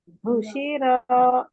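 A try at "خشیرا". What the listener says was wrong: खुशी रॉ, रॉ को मोटा करना है, रॉ। आप जबान की जड़ को ऊपर उठाना। खुशी रॉ, रॉ।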